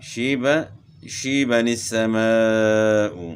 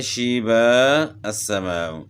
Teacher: اب یہاں آپ دیکھ رہے ہیں کہ چھوٹا سا نون جو ہے نا یہاں لکھا ہوا ہے، تو وصلاً یعنی ملانے کی صورت میں جب یہاں ہم وقف نہیں کریں گے اور ایک ہی سانس میں جو ہے نا آگے پڑھیں گے تو اس صورت میں نون قطنی پڑھنا ہے، اور وقف کی صورت میں جب ہم وقف کریں گے تو پھر نون قطنی نہیں پڑھا جائے گا، جیسے شیب السماء، اور یہاں نون قطنی پڑھا جا رہا ہے، شیبن السماء۔